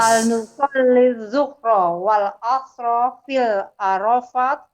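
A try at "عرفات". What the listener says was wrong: Arafatnya nggak ada alifnya. Hal nusalli zuhra wal asra fi arafat.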